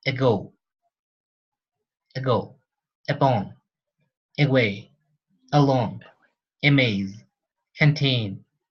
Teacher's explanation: only happens on the stressed syllables for example in this one we can replace the ah for the schwa